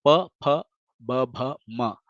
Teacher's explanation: syllables that are made by uh the Two Lips joining each other